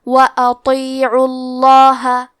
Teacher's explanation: کلمت وَأَطِيعُوا میں حرف الطو کو موٹی آواز میں پڑھنا ہے، کیونکہ عین پہ پیش ہے، لہذا لفظ الجلالہ کے لام کا حکم ہے تفخیم، تو ہم حرف اللام کو موٹی آواز میں پڑھیں گے وَأَطِيعُوا اللَّهَ۔